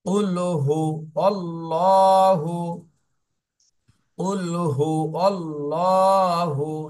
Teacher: এখানে যেহেতু আল্লাহ শব্দের লামের ডানে জবর, এই জন্য এই আল্লাহ শব্দের লামকে মোটা করে পড়তে হবে।